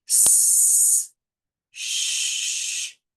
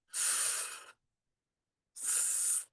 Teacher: you can hear a difference in those pitches, even for the non-voiced ones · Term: sibilant fricatives